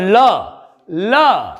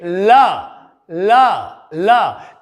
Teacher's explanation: और ल, ल देखिए ल, ल, ल, तो यानी कि दांतों से ऊपर हमारे मसूड़े हैं। ल के उच्चारण में हमारी जिह्वा हमारे मसूड़ों को टच कर रही है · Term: वत्सर्य ध्वनि